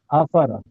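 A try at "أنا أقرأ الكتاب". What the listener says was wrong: اقرأ نہیں ہے نا، اس کے اوپر حمزہ کیا ہوا ہے. حمزہ لکھا ہوا ہے.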